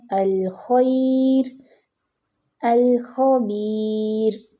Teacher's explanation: آگے دیکھیے را ساکن ما قبل یا ساکن ہو، یعنی را تو ساکن ہے لیکن اس سے پہلے لیٹر آ رہا ہے یا، اور یا بھی ساکن ہے تو را باریک کرتے ہیں